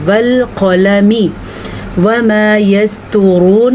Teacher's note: तवा भी पुर पढ़ना है और रॉ को भी पुर पढ़ना है। तवा को इसलिए पुर पढ़ेंगे क्योंकि तवा हरूफ़े मुस्तालिया में शामिल है, और रॉ को इसलिए पुर पढ़ेंगे क्योंकि रॉ के ऊपर पेश है।